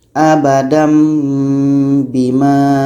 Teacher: mesti ubah kepada bunyi mim Nun hilang aba Dam Bima dibaca dengung dua harkat aba Dam Bima sekarang